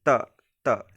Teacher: जीभ जो है दांत से टच होगा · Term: त वर्ग